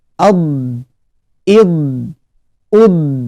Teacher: Bo, di, du, ad, id, ud, addo, iddi, uddu ya. Perhatikan ketika mengucapkan huruf dhad yang bersukun ad, ada sedikit suara memanjang karena dalam huruf dhad itu ada sifat yang bernama al-istitalah. Al-istitalah ini artinya suara memanjang ya.